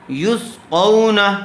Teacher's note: اس کو باریک مت پڑھنا، قوف پر کر کے پڑھیں گے